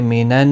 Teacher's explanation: صاد حروف مستعلیہ ہے، پور پڑھا جائے گا، نون کے اوپر کھڑی زبر ہے، ایک الف کی مقدار کے برابر کھینچ کر پڑھیں گے۔ مینن نون مشدد پر غنہ ہوگا، بڑی مد ہے، مد متصل، 4 الف کی مقدار کے برابر کھینچ کر پڑھیں گے۔